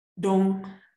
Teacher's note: Low tone on a long vowel, dong, type of tree.